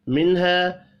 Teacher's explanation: نون ساکن کے بعد ہا ہے، اظہار حلقی ہوگا، غنہ نہیں ہوگا۔